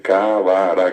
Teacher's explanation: tuvo que meter una vocal entre la B y la r